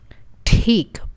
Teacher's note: There's a ta sound and then there's air coming out of our mouth.